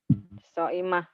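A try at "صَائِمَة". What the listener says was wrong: Soimah mah di TV Bu, di Indosiar tuh Bu, Soimah. Gak ada haknya Bu. Hei, Bu, gak ada haknya. Soimah.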